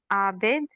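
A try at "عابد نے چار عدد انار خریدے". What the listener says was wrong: वाह, बहुत अच्छा, बहुत अच्छा।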